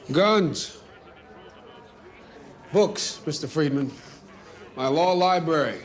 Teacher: it sounds a bit deeper than usual, which is because he studied the way that Marshall spoke while prepping for the role. · Boseman is speaking with more of a breathy rasp in his voice. I would even say that it sounds a bit deeper than usual